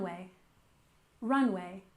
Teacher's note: Runway with stress on the first syllable